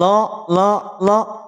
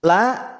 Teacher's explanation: Dia tebal. Kenapa? Karena terangkat pangkal lidahnya.